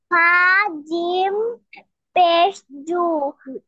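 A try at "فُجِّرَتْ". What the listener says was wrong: ফা জিম পেশ জু হয় না, ফা জিম পেশ ফুজ। পেশ ফুজ। এই জিমে কি তাসদিদ আছে না? তাসদিদ থাকলে কি দুইবার পড়তে হয়।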